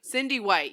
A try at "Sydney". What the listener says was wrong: Sydney, yes. You said Cindy, but it's it's Sydney.